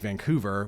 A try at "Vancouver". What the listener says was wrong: Van, it's the U.